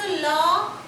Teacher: জিভটা গিয়ে, জিভের ডগাটা গিয়ে দাঁতের গোড়ায় প্রায় লেগে গেল, দন্তমূলীয় দাঁতের গোড়ায় লেগে গেছে, ল হলো। হাওয়াগুলো কোথা থেকে বেরোচ্ছে? জিভের দুই পাশ দিয়ে, সেই জন্য এর নাম পার্শ্বিক ধ্বনি